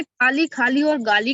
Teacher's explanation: का हो गया अघोष अल्प प्राण, खा हो गया अघोष महाप्राण, और गा हो गया घोष अल्प प्राण हो गया, तो भिन्नता हो गई तीनों में।